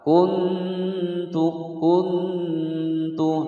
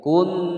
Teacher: Kuntu, kuntu, nun sukun bertemu ta, hukum bacaan ikhfa ya. Suara dengungannya itu terdengar, suara dengungannya berada di ujung lidah. Kun, ada suara nun.